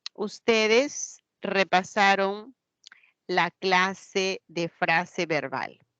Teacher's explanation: hay una entonación una inflexión tonal hacia abajo